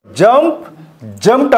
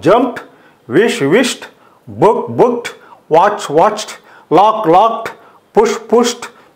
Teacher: డి changes into టీ sound